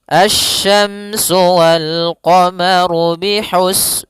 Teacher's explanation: Pada lafal asyamsu di sini ada alif lam syamsiyah yaitu alif lam yang ditulis tapi tidak dibaca sehingga bacaannya langsung ke huruf syin